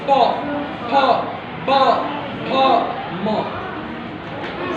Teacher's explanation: ओष्ठ, ओठ कैसे है? प जब बोलेंगे बिना सटाए बोल ही नहीं सकते। ये दोनों ओठ सटते हैं, फिर आवाज निकलती है।